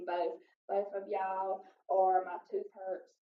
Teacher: And for both and twos, we also do the TH fronting where we replace the TH sound with the F sound